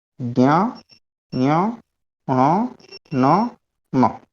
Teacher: ये जो प्रत्येक वर्ग का जो 5वां अक्षर है, इनका उच्चारण कहाँ से किया जाता है, तो बोल रहे हैं यम गणना नाम नासिका च, नाक से इनको बोला जाता है